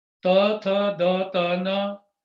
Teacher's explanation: ਇਹ ਜੀਭ ਜਿਹੜੀ ਹੈ ਦੰਦਾਂ ਦੇ ਪਿੱਛੇ ਟੱਚ ਕਰਦੀ ਹੈ